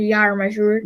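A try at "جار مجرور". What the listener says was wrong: Jar majroor. Not yar majroor. Not yar majroor. Jar majroor.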